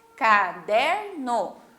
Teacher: o der, que é a nossa sílaba tônica, é a penúltima sílaba